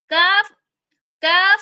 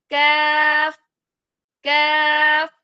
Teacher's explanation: अक्सा-ए लिसान यानी जुबान की जड़। जुबान की जड़ को हम नरम तालू से थोड़ा आगे जहां सख्त तालू शुरू हो रहा है वहां हमने जुबान को लगाना है तो हमारा कैफ अदा होगा।